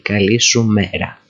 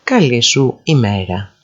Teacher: Some people will say καλή σου μέρα. They drop the first E, the first vowel of the word ημέρα.